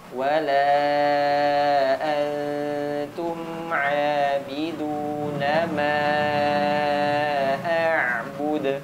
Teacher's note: mimnya panjangkan empat harakat · Ayo, wala antum abiduna ma a'bud. Nah, mimnya panjangkan 4 harokat.